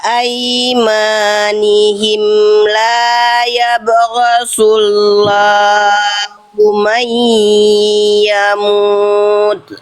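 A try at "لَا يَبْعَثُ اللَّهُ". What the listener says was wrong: Bukan yabghasu, bukan huruf ghain Bunda, nggak ada titiknya ya. La yab'atsu. Bunda baca la yabghasu tadi.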